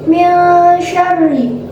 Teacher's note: Pada ayat ini terdapat hukum bacaan ikhfa, yakni karena ada nun sukun yang bertemu dengan huruf shin, dan cara membacanya nunnya dibunyikan dengan samar-samar ke huruf shin sambil berdengung